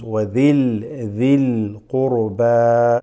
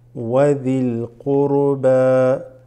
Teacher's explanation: The mixing with the alif lam here, the hamzatul wasl dropping, going straight into the lam, so it becomes wadhil dhil qurba.